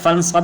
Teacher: فرغب، فانصب، نون کے اوپر فانصب میں جو نون ہے یہاں پہ اخفا ہوگا۔ نون ساکن کے بعد صاد آیا ہوا ہے، حروف حلقی نہیں ہے، اس لیے یہاں پہ اخفا ہوگا